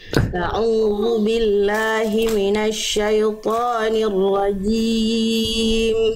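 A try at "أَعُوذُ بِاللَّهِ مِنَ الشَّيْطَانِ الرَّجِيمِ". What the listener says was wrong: Bagus tinggal Jelaskan syainya jangan selewat S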